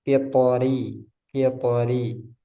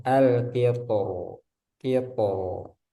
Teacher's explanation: huruf ro pada kata al-qitor di surah Saba dibaca terkik ketika wasol dan tafkhim ketika wakof. Menurut pendapat yang lebih kuat.